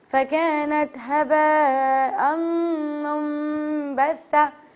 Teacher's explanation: نون ساکنہ اور تنوین کے بعد با آ جائے تو اسے نون کو ہم میم میں چینج کر دیتے ہیں, اور اسے کہتے ہیں ہم اقلاب.